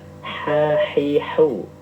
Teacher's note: Nafasnya keluar banyak. Keluarnya banyak sampai terdengar. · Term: hamas